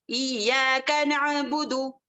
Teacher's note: दाल दोमा है वहां पर, तो एक ही हरकत खींचेंगे, नअबुदु, इय्याका नअबुदु, इस तरीके से करेंगे।